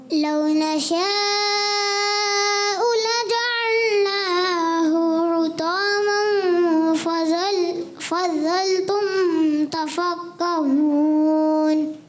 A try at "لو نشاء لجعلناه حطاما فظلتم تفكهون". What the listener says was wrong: پہلا ہا جو ہے تھوڑا سا ایسے محسوس ہوا جیسے حرکت تھوڑی لمبی ہو رہی ہے, اور آپ نے پھر اس کو کنٹرول کیا, اور فظلتم میں